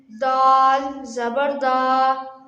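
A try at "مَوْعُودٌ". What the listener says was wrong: दा को क्यों लंबा किया है हाँ सिर्फ दाल जबर दा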